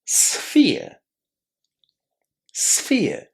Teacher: We start by saying s and f together, a little bit difficult, sf, and then we add the word ear.